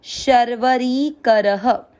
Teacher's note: र में अ की मात्रा तो विसर्ग को पढ़ेंगे ह